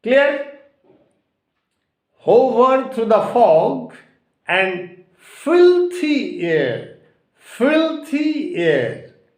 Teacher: So the stress has been given on FIL, filthy air, and air remains unstressed.